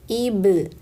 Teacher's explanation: Hamzah kasroh i bertemu ba sukun, kolkolahkan ba sukunnya, rapatkan bibirnya, ib. Lalu lepaskan, ib.